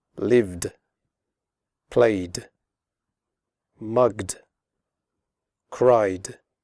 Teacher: sounds such as V G and y and all vowel sounds the final ed is pronounced like d as in the word good again the e is silent